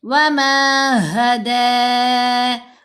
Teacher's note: جب کھڑا زبر کے اوپر وقف آئے گا تو ہم نے لاسٹ لیٹر کو ساکن نہیں کرنا، حرکت کے ساتھ ہی پڑھیں گے اور مد عارض لگا کر 4 حرکات کی مقدار دال کو لمبا کریں گے. وما ہدی، اور یوں باریک آواز اسمائلی فیس کے ساتھ، دو نہیں کرنا.